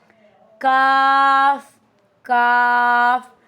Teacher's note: काफ जुबान की जड़ लेकिन हल्की आवाज के साथ।